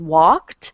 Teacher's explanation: the ending is K it's unvoiced and so it has a t sound at the end